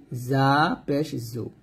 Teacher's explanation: জা উচ্চারণ করার সময় জিহ্বাটা নিচে দাঁতে লাগাবেন